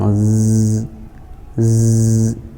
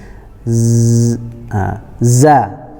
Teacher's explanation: ada getaran sebelum kita masuk ke dalam hurufnya, kita ambil ancang-ancang z, z. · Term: huruf za